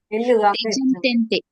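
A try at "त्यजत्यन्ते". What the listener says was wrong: ತ್ಯಜತ್ಯಂತೆ ಕಳೇವರಂ ತೇಜ ಅಲ್ಲ ಮತ್ತೆ ತ್ಯಜ ತ್ಯಾ ತ್ಯಾ ತ್ಯಜಂತ್ಯಂತೆ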